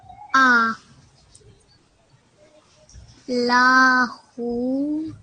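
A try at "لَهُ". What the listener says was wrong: try to make this short la. Only 1 second. Lahu.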